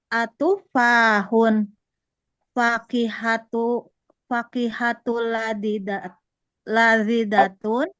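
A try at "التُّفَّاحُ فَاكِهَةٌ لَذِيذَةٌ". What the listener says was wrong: Nggak bertanya, bukan bertanya intonasinya. Atufahu. Atufahu fakihatun ladzidatun.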